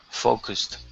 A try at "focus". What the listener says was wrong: Almost. You're saying fa. Okay, it's focus.